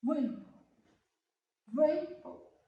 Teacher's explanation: the rainbow have two syllables, so you must stress more in the first syllables and then stress in the second syllable.